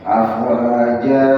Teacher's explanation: harusnya dibaca dua harakat tapi dipanjangin